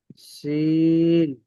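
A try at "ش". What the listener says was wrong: শিন একটু শক্ত হবে এটা। এই শব্দগুলো একটু শক্ত হবে, সেজন্য এটা আরেকটু শক্ত করে বা মোটা করে।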